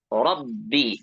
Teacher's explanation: Ro-nya tebal. Kemudian ba-nya di sini ada tasydid, mohon untuk dibaca dengan nabar ya. Rabbi, jadi ada tekanan.